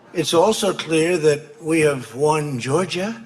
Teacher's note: a rising intonation we associate with questions and he's not making a question here is making a statement